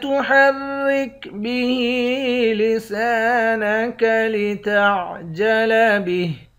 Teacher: ہا کے نیچے کھڑی زیر ہے، اس کو ایک الف کی مقدار کھینچ کر پڑھیں گے۔ سین کے بعد الف ہے، اس کو بھی ایک الف کی مقدار کھینچیں گے، آخر میں ہا ساکن ہے۔